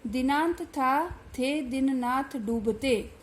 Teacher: द, थ, द, न, ये दंत्य वर्ण है और एक ही उच्चारण स्थान से उच्चरित है